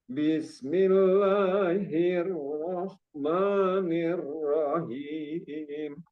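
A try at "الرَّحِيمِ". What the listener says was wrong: Nah, jadi dia him itu bukan jangan sampai besar ya. Ya bukan him tapi hi, him. Lebih haknya hawa apa desisan apa hawa apa napas yang keluar itu lebih banyak dan lebih ditekan lagi.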